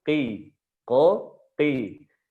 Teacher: Huruf qaf dia naik, tapi nggak lengket. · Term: infitah